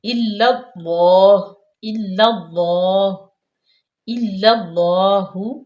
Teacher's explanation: تو یہ ایک اور بات آپ کو یہاں پہ بتا دوں کہ کچھ لوگ اللہ کر جاتے ہیں، یعنی کہ اللہ کی لام کی جو پہلی لام ہے یہ مشدد ہے نا، اس میں 2 لام ہے، تو پہلی لام ساکن ہے اس کو باریک پڑھنا ہے، یہ جو مشدد ہے یعنی کہ جو متحرک ہے اس کو پر پڑھنا ہے